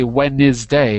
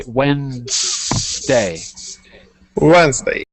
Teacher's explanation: we often skip or eat or swallow one of the syllables in Wednesday it's the NES we don't say w is day we say